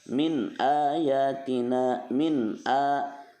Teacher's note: nun mati menghadapi hamzah atau alif namanya izhar halki, dibacanya jelas dan terang